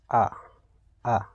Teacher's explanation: इसमें केवल एक ही स्वर आएगा, जैसे आ, यानी कि जिह्वा इस समय समान अवस्था में है, ना आगे का भाग उठ रहा है ना ही पीछे का। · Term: मध्य स्वर